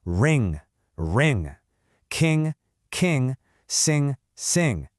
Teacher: You do not say na-ga. No. Those 2 letters blend together to make one single sound, eng. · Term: eng sound